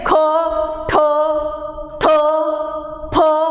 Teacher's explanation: ह मिसळलेले, म्हणजे हा हवेचा मोठा लोट मिसळलेले उच्चार आहे. म्हणून या सगळ्या स्वनांना महाप्राण म्हटलं जातं.